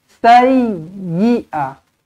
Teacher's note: Sayyi dan huruf ya di sini kena tekankan lebih sedikit sebab apa? Ada sabdu. Sayyi'a. Jangan bis sayyi'a.